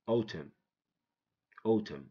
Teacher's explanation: when n comes after M the N is silent it has no sound it makes no sound